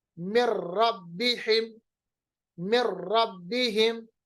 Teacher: نون ساکن کی آواز کو را کے ساتھ ملایا